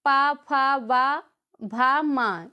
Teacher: ये पा वर्ग के जितने भी अक्षर होते हैं वो ओष्ठ से बोले जाते हैं